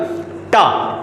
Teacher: और आपकी जीभ जहां पे टकरा रही है समझ लीजिए वही क्या है, आपकी मूर्धा। और मूर्धा से टकरा के जो ध्वनियां निकलती है उसको बोलते हैं अपन मूर्धन्य ध्वनियां।